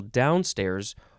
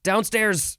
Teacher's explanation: you can emphasize the first syllable downstairs or it also looks like you can emphasize both syllables